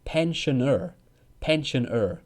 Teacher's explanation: So Americans use the R sound at the end. British people don't say R sound.